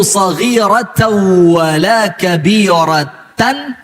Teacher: Tanwin ketemu wow. Maka namanya idgham bi gunnah.